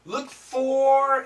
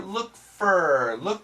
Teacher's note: it's gonna be shorter, look for, more like an F-E-R, like her, fur